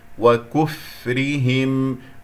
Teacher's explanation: لا تسحب ضمة الكاف إلى الفاء الساكنة · أنا أقول الصحيح وكفرهم، أضم ثم أرجع الشفتين إلى الوضع الطبيعي، والراء مرقق لأنها مكسورة